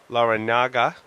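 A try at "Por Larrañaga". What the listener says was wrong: It's got the squiggly line over the end, so you have to. It's like años. You have to say años, not anos, because those are two totally different things.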